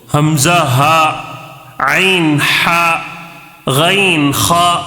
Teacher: یہ سارے کے سارے حروف حلق سے ہی ادا ہوتے ہیں. ٹھیک ہے، حمزہ ہا، حمزہ شروع حلق سے نکل رہا ہے، ہا. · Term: حروف حلقی